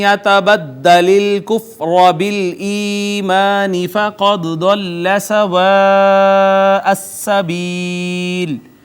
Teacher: قاف حروف مستعلیہ میں سے پر کر کے پڑھا، دال حروف کلکلہ میں سے ساکنہ کلکلہ کیا، یہ مد متصل ہے، دیکھیں حرف مدہ کے بعد حمزہ سب مد اسی کلمہ میں مد متصل، یا ما قبل مکسور یا مدہ ہے، اور آخر میں سکون عارضی ہے وقف کی وجہ سے، لہٰذا مد عارض بھی ہے۔